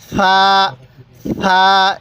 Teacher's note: সাটা একটু নরম করে উচ্চারণ করবেন। তাহলে সাটা উচ্চারণের সময় জিহ্বাটাকে দাঁতের আগার সাথে লাগিয়ে দিবেন।